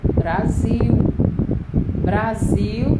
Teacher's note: Brasil também é uma palavra com 2 sílabas. A sílaba tônica é sil.